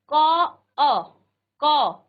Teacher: आप आधा क का उच्चारण करेंगे और फिर अ का भी आप उच्चारण करेंगे।